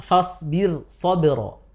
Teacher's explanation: roknya sukun, sebelumnya kasroh, setelahnya isti'la. Tapi dia dibaca dengan tipis. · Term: huruf ro sukun